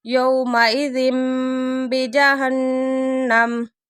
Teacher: تنوین کے بعد با آگے اقلاب ہو رہا ہے